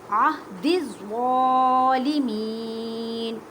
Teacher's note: یا ساکن سے پہلے زیر ہے تو یا مدہ کا قاعدہ کریں، مینس کے ایک الف کی مقدار میں کھینچ کر پڑھیں.